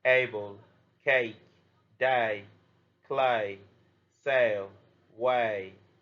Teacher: Five open close sounds. One, /eɪ/ long A sound, impure English sound